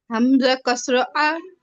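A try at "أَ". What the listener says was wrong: ফাতহা, উপরে জবর থাকে।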